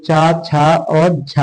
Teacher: हिंदी की तालव्य ध्वनियां जो है वो चा, छा और झा है